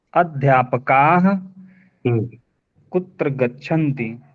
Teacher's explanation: का को ज्यादा खींचिए विसर्ग को ज्यादा मत खींचिए